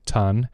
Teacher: a kid that won't say sun and they say ton because they're stopping the sound. So the placement's right, but the way that they're producing it is wrong.